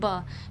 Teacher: ब दोनों लिप्स क्या कर रहे हैं एक दूसरे स्पर्श कर रहे हैं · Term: स्पर्श व्यंजन